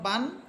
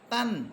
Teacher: তানভীনের উচ্চারণ বাংলায় দন্তন্য এর উচ্চারণ হয়